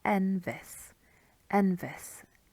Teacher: You might find some exceptions, but if you go with that, it gives it the character of the language, and it's really a nice kind of stress on the second to last syllable that you find